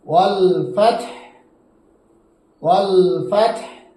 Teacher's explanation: এখানে ফাত হু আছে, আমরা যখন এখানে অক্ফ করব, যে অক্ফ করলে হু হবে না, এখানে সাকিন হয়ে যাবে